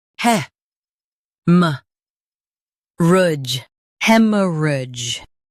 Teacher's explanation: Stress hem and keep soft. Rudge is smooth.